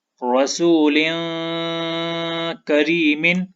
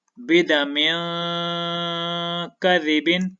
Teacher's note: تو ہم اس تنوین پر اخفا کریں گے یعنی کہ نرم غنہ کریں گے